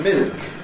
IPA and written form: mɪlk (milk)